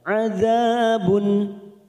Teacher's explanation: dum tanwin bertemu Ain namanya bacaan idhar halq kita baca jelas tanpa mendengung